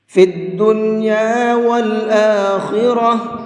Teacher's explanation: ہم نے یہاں پر گولتا پر وقف کیا ہے، اور گولتا پر وقف کرتے ہیں تو گولتا ہا بن جاتی ہے، اسی لیے میں نے اس کو آخرہ پڑھا ہے ہا کے ساتھ میں۔ · خا کو بھی اور را کو بھی دونوں لفظوں کو منہ بھر کے پڑھیں گے، پر کر کے پڑھیں گے۔